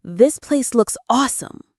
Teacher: The stress is on place and awesome. The intonation is high and excited to show you're genuinely impressed.